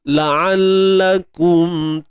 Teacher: Untuk ain macam biasa, ain tengah kerongkong, sempit kan.